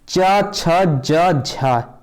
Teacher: तालु के द्वारा जो बोले जाते हैं ये हो जाएंगे उच्चारण स्थान, तालव्य व्यंजन हो गए आपके